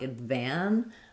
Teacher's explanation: I'm going to release and stress on the van syllable. Letter A says the A sound, just like in the word van.